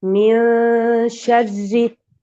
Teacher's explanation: we don't pronounce nun from its makhraj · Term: ikhfa